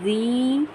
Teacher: یا مدہ ہے، اس یا مدہ کو ہم ایک الف کی مقدار کھینچ کر ادا کریں گے